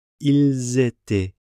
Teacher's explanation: Because the verb begins with a vowel, we end up with liaison. So instead of ils étaient, we get ils étaient.